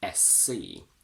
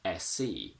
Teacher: When I say them together, the letter S ends on a S sound and the letter C starts on the same S sound. So I geminate them and I say SC.